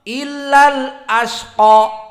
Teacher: hamzahnya jelas, asqa, dan qa-nya fathah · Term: tahqiq al-hamzah